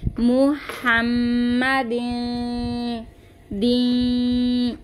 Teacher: इख्फा का गुन्ना करेंगे, तो हम इसकी आवाज़ को नीचे की तरफ गिराएंगे